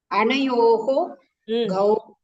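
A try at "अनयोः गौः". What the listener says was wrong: Uttamam.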